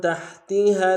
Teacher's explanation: ہا کو گہرائی سے ادا کریں گے